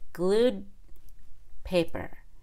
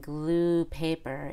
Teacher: make a held D before the consonant in the next word glued paper it's very obvious that I'm not saying glue paper in the present tense glued paper that stop is very audible